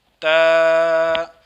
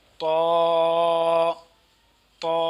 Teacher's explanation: زبان کی نوک اور اوپر کے دانتوں کی جڑ سے ادا ہوتے ہیں